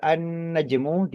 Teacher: Lam sukunya tidak dibaca secara gamblang, justru melebur kepada huruf nun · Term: idgham samsiah